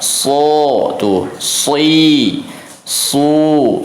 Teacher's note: Ujung lidah ini sebetulnya harusnya sejajar dengan gigi seri bawah. Cuman karena sifatnya si do ini itbaq dan isti'la, maka dia lidahnya naik, terangkat. So, tuh, si, Su, ya tetap ujung gigi ya sejajar atau menyentuh kepada sejajar dengan gigi seri bawah, suaranya keluar dari celah-celah antara gigi seri atas dan bawah ya.